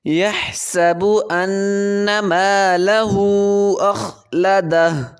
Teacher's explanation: مالہ پہ چھوٹی مد ہوگی، 3 حرف مقدار اس کو کھینچیں گے